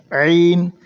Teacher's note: عین حلق سے ادا ہوگا